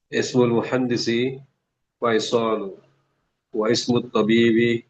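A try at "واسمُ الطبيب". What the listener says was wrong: Wasmu. Langsung nyambung.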